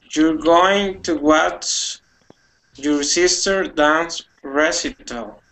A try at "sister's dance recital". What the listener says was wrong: Okay, you're going to watch your sister's. Make sure that you add that S there. Sister's dance recital.